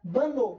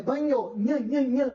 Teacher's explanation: Na palavra banho, é o NH com som mais nasalizado ainda, que o próprio N já é.